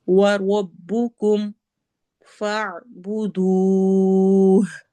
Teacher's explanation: वाव में होंठ गोल होंगे